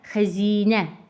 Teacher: İkinci hecasındakı I saiti uzun tələffüz olunur.